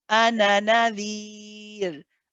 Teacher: if you continue, then you drop the alif. Okay, so if I carried on reading now and I said ana, then it's as though this alif is not there.